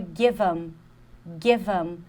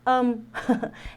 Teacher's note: E com them, vai ser, a gente vai mudar também. A gente não pronuncia esse TH. Isso acontece muito, é muito comum. E aí, a gente vai pronunciar esse EM como um Então, é give 'em.